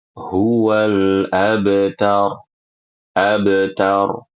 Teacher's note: perhatikan qalqalah pada huruf ba. Ini namanya qalqalah sughro